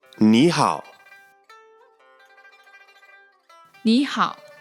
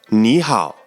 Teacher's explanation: when two third tones are together the first third tone becomes a second tone